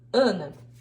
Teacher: o A nasalizado de Ana